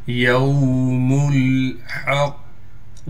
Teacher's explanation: یوم الحق، میم کو لام سے ملائیں گے، پھر حا کو ہم نے قاف سے ملانا ہے، قاف کو موٹا بھی کر کے پڑھنا ہے اور قاف پر تشدید ہونے کی وجہ سے تھوڑا ٹھہراؤ بھی کریں گے